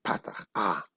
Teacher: They say both ah, but in the Ashkenazic pronunciation, kametz is o, patach is ah.